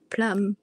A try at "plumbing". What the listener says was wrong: No, it's plumbing. The B is silent.